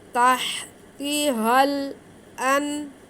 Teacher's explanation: آگے ہا پہ کھڑا زبر ہے تو اسے ہم ایک الف کے برابر کھینچیں گے